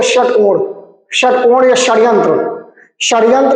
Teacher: जीभ ऊपर का जो तालु है उसके पीछे वाले भाग से हल्का सा टच करेगी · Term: मूर्धन्य सा